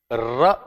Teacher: र को बोलते समय जीभ में आप देखेंगे कि अगले पार्ट पर जो टंग की टिप है उस पर वाइब्रेशन होता है। र बोलते समय। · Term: प्रकंपित व्यंजन